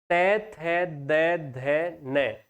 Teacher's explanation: यह जो त वर्ग होता है पूरा का पूरा यह होता है दंत्य।